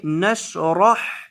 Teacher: ألم نشرح لك صدرك، ألم نشرح لك صدرك، حمزہ زبر ا، لام زبر میم لم، ألم، نون زبر شین نش، را زبر ح رح، نشرح نشرح، را کو موٹا کریں گے کیونکہ را کے اوپر زبر ہے، اور حا کو بیچ حلق سے ادا کریں گے